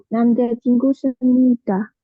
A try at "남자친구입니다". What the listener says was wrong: masa semnida. Semnida itu rumus buat apa? Nah, imnida.